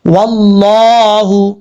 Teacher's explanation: واو کو پڑھتے وقت ہونٹ گول کریں گے